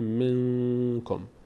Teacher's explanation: نون تلفظ میشه اما نه از مخرجش، اما از بینی ادا میشه صدا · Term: اخفا